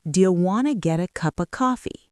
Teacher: The words getta become getta, and cup of becomes cuppa